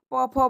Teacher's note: प फ ब वाले को ओष्ठ से कहते हैं।